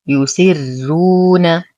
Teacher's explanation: الراء هنا مضمومة ما قبلها مكسور فهي ترقق للإمام ورش